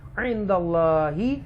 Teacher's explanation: اللہ کے نام سے پہلے زبر ہے اس لیے لہذا اللہ کے نام کو تفخیم کے ساتھ پڑھیں گے، موٹا بولڈ پڑھیں گے، اسٹرونگ پڑھیں گے